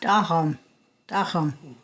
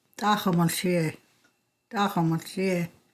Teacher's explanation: This is an ejective T-like sound. It's written with a T with an apostrophe above it.